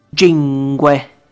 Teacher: In the Cilentano dialect, this sound is more like the sound as in jar, jet, job. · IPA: dʒ